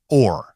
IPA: ɔr